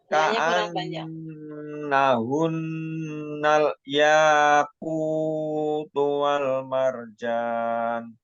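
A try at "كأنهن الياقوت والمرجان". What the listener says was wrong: Wah, marjannya jangan langsung dilepas. Wal marjan panjang, jangan wal marjan pendek itu. Bukannya pendek.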